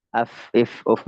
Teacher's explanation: jadi dia tempatnya bagian perut bibir itu mengarah ke gigi seri bagian atas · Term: fa